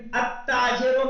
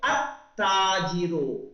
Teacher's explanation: التاجروں میں ہم نے پڑھا الف لام نہیں. ہم نے کیا کیا، الف کو کس سے ملا دیا، تا سے ملا دیا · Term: حروف شمسی